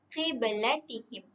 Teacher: huruf ba di mana kita perlu melantunkan sedikit kerana ianya qalqalah sughra